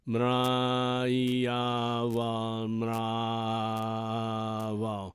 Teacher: So the v, though, you don't have to say v, because it is in between a v and a w.